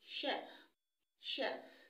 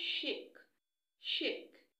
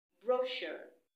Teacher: words with CH that I pronounced with sh, the sh sound